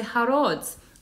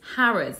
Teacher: Actually, it's Harrods. That O is an uh, Harrods